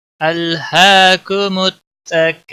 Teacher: ہا کھڑی زبر ہے، ایک الف کے برابر کھینچ کر پڑھیں گے۔